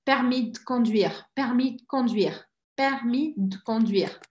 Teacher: O D praticamente desaparece.